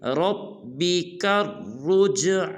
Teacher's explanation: را کو جیم ساکن کے ساتھ ملائیں گے اور جیم کو قلقلہ کریں گے